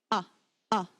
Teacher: Do you feel the way that your throat clicks open at the beginning? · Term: harsh click